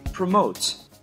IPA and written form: prəˈmoʊt (Promote)